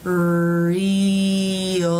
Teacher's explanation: an L is a dark L if it comes after the vowel or diphthong in a syllable, like in the word real.